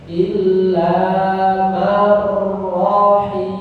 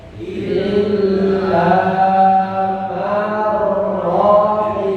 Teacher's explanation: Illa man rahimahullah. perhatikan panjang pendeknya. Rahimah pendek semua itu ya.